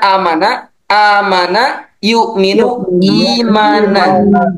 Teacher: jadi membaca i di sana dibacakan panjang, huruf ya di sana sebagai pengganti bertemunya dua hamzah. Sedangkan baris sebelumnya adalah kasroh. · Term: mad badal